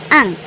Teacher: इसे अनुस्वार कहते हैं। इसे बोलने में नाक से ध्वनि निकलती है।